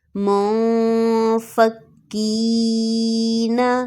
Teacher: نون ساکن ہے اور اس کے بعد فا ہے تو یہاں پر اخفا ہوگا